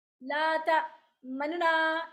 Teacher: ये जो नून का पेश है इसको वन थर्ड, यानी इतना थोड़ा पढ़ेंगे कि वन थर्ड हरकत सुनाई दे। ला ता मनना, इस तरह करके बहुत तेज़ी से।